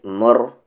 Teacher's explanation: را ہیوی ہوگا کیونکہ اس سے پہلے پیش ہے · سے تو آہا ہوگا، لیکن آگے ملائیں گے تو جا آہل، آگے میم کو را میں ملائیں گے